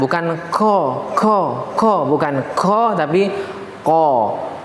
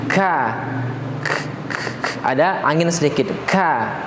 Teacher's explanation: Dan kesalahan yang sering terjadi oleh pembaca Quran adalah ketika mengucapkan huruf qaf, ya, tidak sesuai sifatnya. Ya, qaf ini dia punya sifat isti'la dan juga dia bukanlah huruf yang mengeluarkan angin ketika kita mengucapkannya. Dia tidak punya sifat hamas.